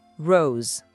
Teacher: O O é bem fechadinho. Repete comigo caprichando nesse O.